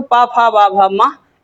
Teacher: इनका उच्चारण स्थान क्या है? ओष्ठ है। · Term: पा वर्ग